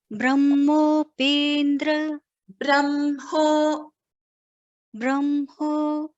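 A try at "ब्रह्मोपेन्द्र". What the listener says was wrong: When you're combining Brahmopendra, you are missing that Hakara. Brahmopendra.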